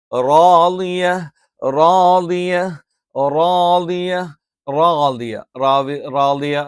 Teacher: പറഞ്ഞാൽ നാവിന്റെ തലയുടെ അറ്റം എന്ന് പറയും മുകൾഭാഗം അഥവാ നാവിന്റെ തലയുടെ മുതുക് മേലെ മുൻപല്ലിന്റെ ഊനിന്റെ അല്ലെങ്കിൽ എന്താണ് ആ മോണയുടെ പിൻഭാഗത്ത് വെച്ചുകൊണ്ടാണ് നമ്മൾ റ ഉച്ചരിക്കുന്നത്